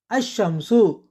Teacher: இங்கு இல் உச்சரிப்பை இழந்து இஷ் இரட்டிப்பாகி அஷ்ஷம்சு என்று ஆகிறது